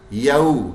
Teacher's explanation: ہی ول پھر دوبارہ الف نہیں پڑھا گیا. یو لین بن گیا، واو ساکن سے پہلے زبر ہے